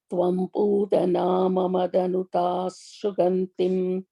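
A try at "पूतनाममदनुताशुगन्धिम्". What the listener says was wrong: you put an extra ma there. Tvam putanam atanuta sugandhim. Atanuta long.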